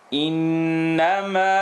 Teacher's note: We end here with noon shadda, full nasal sound.